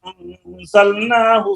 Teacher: انزلنا میں یہ نون میں اخفا ہو رہا ہے